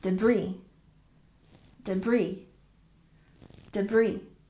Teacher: we don't say the s sound in this word and we stress the second syllable